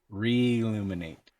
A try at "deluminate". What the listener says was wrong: Hey, you're forgetting the D.